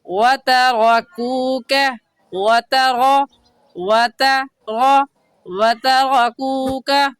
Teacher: کاف باریک آ گیا تو کاف پر ہونٹوں کو پھیلا لیں گے